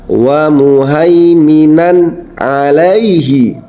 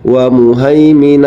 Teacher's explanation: bertemu dengan salah satu huruf Izhar yakni Ain ya Yang ini maka cara membaca tanwinnya dengan jelas tidak boleh dengung tidak boleh disamarkan